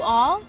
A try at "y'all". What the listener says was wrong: No, y'all. Y'all. No, you smoosh them together. Y'all.